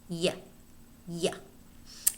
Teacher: the second one is the voiced palatal semivowel